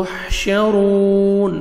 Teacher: वाव मद है 1 सेकंड आपने रॉ को खींचना भी है और रॉ को मोटा भी करना है